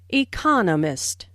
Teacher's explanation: economist this content word has new information so it is emphasized there are four syllables in economist with the stress on the second syllable